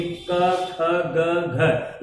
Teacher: यहाँ पे आप देख सकते हैं कि कंठ से हम बोलेंगे क, ख, ग, घ, यानी कि जो एयर निकल रही है इन वर्णों के उच्चारण करते समय हमारा एयर कंठ से होकर के निकल रही है, इसलिए हम इसको क, ख, ग को क्या कहते हैं, कंठ ध्वनियां कहते हैं।